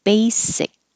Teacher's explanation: because it ends with a k sound you put your tongue in the k position but you don't release it